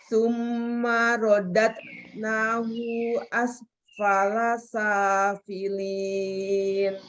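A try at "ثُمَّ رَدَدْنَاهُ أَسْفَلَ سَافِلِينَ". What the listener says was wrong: Hu-nya pendekin. Summa rodadnahu asfala safilin.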